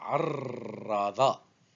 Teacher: Le R roulé au milieu, je la prononce plusieurs fois.